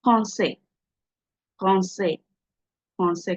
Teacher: I didn't pronounce the S. The S is not supposed to be pronounced.